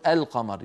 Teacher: نرى اللوحة التالية وضع لام التعريف مع حروف الهجاء بعدها قمرية يعني مظهرة، معنات قمرية تشبه اللام في كلمة القمر. لو قلنا القمر كل الناس يقولون القمر، يظهرون اللام عند القاف